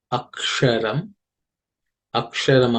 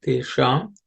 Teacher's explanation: This aksha, the sha here is cerebral sha, so the tip of the tongue has to point upwards to the roof of the mouth.